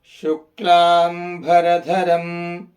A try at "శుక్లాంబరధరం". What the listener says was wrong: దాకు జట ఉంది కనుక ధరం అనాలి. మొదటిదాగా ద ధ ధ జట.